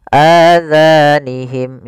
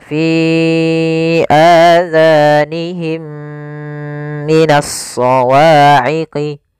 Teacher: suara mim yang pertama masukkan kepada mim kedua dan ditahan. Masukkan mim kedua, ditahan suara gunnahnya.